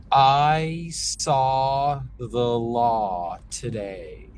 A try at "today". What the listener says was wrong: can I have a little more rounding today?